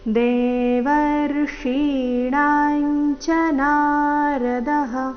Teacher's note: ದೇವರ್ಷೀಣಾ ಮೂರ್ಧನ್ಯ ಶ ಈಕಾರದೊಂದಿಗೆ ದೀರ್ಘ ಮುಂದೆ ಣ ದೀರ್ಘ ಹೇಳಿ ನಂತರ ಅನುಸ್ವಾರದ ಉಚ್ಚಾರಣೆ ತಗೊಳ್ಬೇಕು